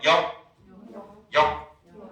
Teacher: 혀뿌리 쪽이 연구개 쪽을 콱 막았다가 터트리지 않고 그대로 콱 막은 채로 소리가 끝납니다. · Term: 불파음화